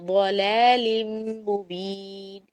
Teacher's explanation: فی ضلال مبین کے اندر ضاد کو موٹا پڑیں گے اور لام کو باریک پڑیں گے